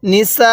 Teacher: এই সিনের মধ্যে আমরা ৪ আলিফ টান দিব